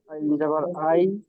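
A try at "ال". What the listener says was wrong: আই নয়, আল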